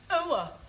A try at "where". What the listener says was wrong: Almost. Try again, but this time, don't say ower, just were. Were.